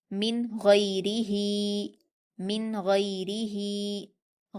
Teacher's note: نون ساکن کے بعد حروف اظہار میں سے غین آیا ہے، اس لیے ہم نون ساکن کی آواز کو ظاہر کر کے بغیر غنہ کے جلدی پڑھیں گے